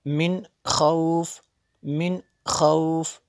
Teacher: یہاں پہ غنہ نہیں ہوگا کیونکہ نون ساکن کے بعد خا حروف حلقی میں سے ہے تو یہاں پہ اظہار ہوگا۔